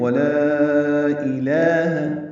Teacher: حمزہ کو جلدی پڑھنا ہے، لام باریک ہے، 2 حرکات لمبا کرنا ہے، کھڑا زبر ہے، جیسے وتعالی میں لام پر کھڑا زبر تھا. · مد اصلی کے بعد دوسرے کلمے میں حمزہ ہو تو مد منفصل ہوتی ہے، اس لیے ہم اس کو 4 حرکات لمبا کرتے ہیں